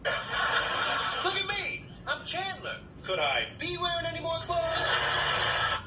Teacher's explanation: He's playing, of course, with the accentual function, because could I be? He's stressing the verb to be as well, which is usually unstressed.